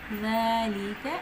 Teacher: اور زوا کا مخرج ہے، تو نرمی سے پڑھنا ہے، لیکن کھڑی زبر الف مدہ قائم مقام مدہ ہے تو ایک الف کے برابر لمبا کرنا ہے